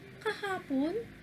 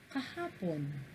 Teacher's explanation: Yung ka, normal pa rin, ikalawang bilang. Yung ha, ikatlong bilang, ibig sabihin mataas. At yung pon, tumutukoy sa bilang 1 na mababa. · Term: nagsasalaysay